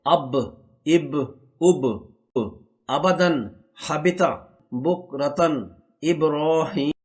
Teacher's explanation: دونوں ہونٹوں کے تر حصوں کو یعنی کہ اندر والے حصوں کو جب ملایا جاتا ہے تو با ادا ہوتا ہے۔ اس کو میم کی نسبت ذرا زور سے ملانا ہو۔